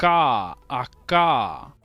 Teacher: ele vai ser uma coisa explosiva, vai ser som de corte seco mesmo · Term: velar explosivo